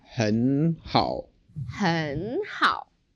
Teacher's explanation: when we have 2 third tones together, then we change the first third tone to a second tone